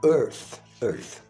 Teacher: você não precisa fazer uso das cordas vocais é como se fosse um sopro uma espécie de F sem acompanhamento da vocal · O TH no final dessa palavra, ele é um som não vociferado.